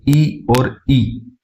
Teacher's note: इ और इ का उच्चारण जो हो रहा है तालु से होता है और इनको तालव्य स्वर कहते हैं